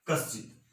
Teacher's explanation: यानी ये आपका दंत्य स है, दंत्य स की जगह तालव्य स बनाना है